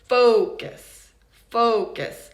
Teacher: Obviously, the first syllable is stressed, right? Focus. focus. And the second syllable is not stressed.